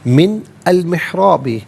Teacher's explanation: من کو جب المحرابی کے ساتھ ملائیں گے تو نون پر زبر ہوگا. المحرابی کی لام ساکن کے ساتھ ملائیں گے.